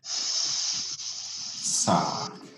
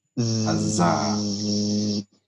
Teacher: when I produce the S sound, I feel nothing with my fingers on my throat. But when I produce the Z sound with my fingers on my throat, I can feel the vibration on my fingers, right? That vibration is the result of the vocal folds doing really close vibrations next to each other.